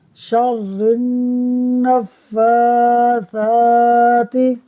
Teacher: نون مشدد ہے تو اس وجہ سے یہاں غنہ ہوگا، پھر فا اور ثا دونوں کے اوپر کھڑی حرکت ہے، لہٰذا دونوں کو ہی کھینچ کر پڑھیں گے